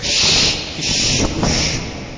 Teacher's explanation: مخرج سے جب شین نکالیں گے تو اس کی زبان کی دونوں سائڈ میں آواز پھیلے گی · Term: تفشی